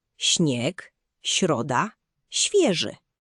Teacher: Teraz litera ś, czyli zmiękczony szy. To trochę jak angielskie ś, ale bardziej miękkie. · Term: ś miękkie